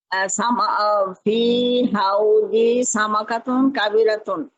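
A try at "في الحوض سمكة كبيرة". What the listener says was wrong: মাশাআল্লাহ, আপনি অনেক সুন্দর বলেছেন।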